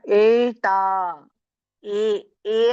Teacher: ಏ ಅಂದ್ರೆ ನಾಲಿಗೆ ಹತ್ತಲ್ಲ ಏ ಅಂದ್ರೆ ನಮಗೆ ಗಂಟಲಿಂದ ಬಂದಂಗ ಆಗುತ್ತೆ